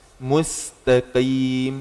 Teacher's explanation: kalau qaf itu sifatnya syiddah tapi tidak ada hamasnya. Jadi jangan sampai qaf ada kayak sedikit gitu.